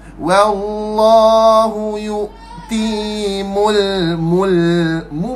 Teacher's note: Mu muncul mulut, nah, mim dhammah muncul mulut, lepas tu lam mati senyum balik.